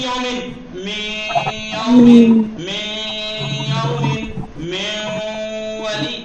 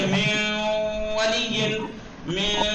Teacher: आवाज जो है नाक से थोड़ी खींच के अदा होगी। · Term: غنہ